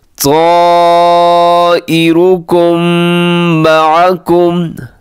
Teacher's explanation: यहाँ मीम साकिन के बाद मीम है तो इदगाम शफ़ी हो रहा है, गुन्ना भी साथ करना है।